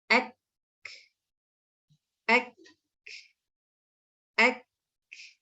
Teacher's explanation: the sound will be blocked and the flow of the air is actually blocked. Why? Because the makhraj is completely closed.